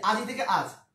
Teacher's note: তাই বলা হয় অন্ত স্বরলোপ, মানে শেষ থেকে বাদ পড়ে যাওয়া